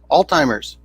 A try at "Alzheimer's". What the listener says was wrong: Yeah, it's Alzheimer's. There's no D. It's Alzheimer's. It sounds like you're pronouncing a D in there.